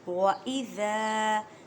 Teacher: زال کو نرمی سے ادا کریں اور زال کو ایک الف کی مقدار میں کھینچ کر پڑھیں کیونکہ الف مدہ کا قاعدہ ہو رہا ہے۔